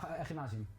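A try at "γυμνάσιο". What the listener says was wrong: Yeah, we have a soft G, so it's gymnasio.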